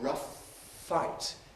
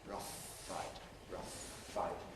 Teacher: We say rough fight, keeping the F articulation going twice as long. Rough fight, rough fight. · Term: long F